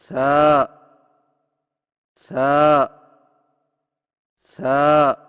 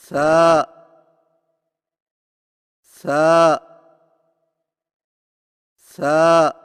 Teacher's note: ثا کی ادائیگی میں زبان کی نوک کو سامنے والے اوپر کے دو دانتوں کے اندرونی کناروں سے نرمی سے لگا کر باریک آواز میں پڑھیں